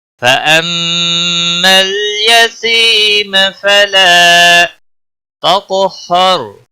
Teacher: قاف پر قلقلہ بھی ہوگا، اور قاف حروف مستعلیہ میں سے بھی ہے، موٹا بھی پڑھا جائے گا